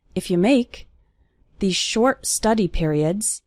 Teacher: the words if and you are fast they are just leading up to the word make